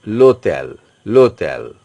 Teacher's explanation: That is H is totally mute or silent. So you are pronouncing it Lotel. L'hôtel. The pronunciation is coming from O. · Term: H mute